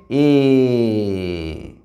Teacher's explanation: মুখবিবরের কোথাও কিন্তু ধাক্কা খাচ্ছে না, এ একটানা উচ্চারিত হচ্ছে, মুখবিবর থেকে বাতাস বাইরে নির্গত হচ্ছে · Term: স্বরধ্বনি